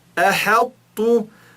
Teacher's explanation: Você enche a bochecha para falar o tó, só que você não chega a falar ele e fala o té no lugar.